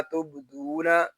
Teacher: با ساکن میں کلکلا ہوگا